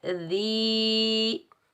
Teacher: दाल के नीचे ज़ेर, दाल को हम याए साकिन के साथ मिलाएंगे और एक अलिफ की मिकदार खींच कर अदा करेंगे। ये याए मद्दा है।